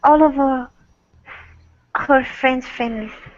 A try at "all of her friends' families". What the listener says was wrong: So there isn't a need to finish the F saying all of. It's just all of her friends' families. Okay, so what you're doing is you are finishing the F. You're saying olive. So don't say all of her. It's all of her. Go right to the H. All of her friends.